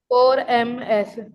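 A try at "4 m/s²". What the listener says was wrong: ये ऐसे नहीं बोलते इसको, इसको रीड करते मीटर पर सेकेंड स्क्वायर। एमएस क्या चीज है? एमएस धोनी थोड़ी है ये, एमएस, ठीक है? मीटर पर सेकेंड स्क्वायर, टू भी नहीं बोला, एमएस बोल रहे हो आप, एमएस, ठीक है? मीटर पर सेकेंड स्क्वायर ऐसे बोलते हैं।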